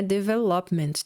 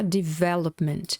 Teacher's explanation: a sílaba tônica é veh